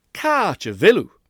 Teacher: Listen to how short and unstressed the pronoun is. It's oo. Ooh.